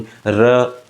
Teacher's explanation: क्या कहते हैं, र, देखो जीभ को हमने मोड़ा ना, तो इस वजह से जब भी र को बोलेंगे तो जीभ भी मुड़ेगी, तो इसके लिए इसको लुंठित कह दिया। र को बोलेंगे तो जीभ में कंपन भी होगा, इसलिए इसको प्रकंपित व्यंजन कह दिया। · तो जो री है यानी कि र है, उसको हम लोग क्या करेंगे, प्रकंपित या लुंठित व्यंजन कहेंगे। तो र का उच्चारण करते समय जिह्वा में लुंठा अर्थात मोड़ पड़ जाता है, लुंठा अर्थात मोड़ पड़ जाता है, घुमाव आ जाता है, अर्थात जिह्वा का ऊपर की तरफ मुड़ जाती है, यानी कि जिह्वा जो है ऊपर की तरफ क्या हो जाती है, मुड़ जाती है, अतः इससे लुंठित व्यंजन भी हम लोग कहते हैं।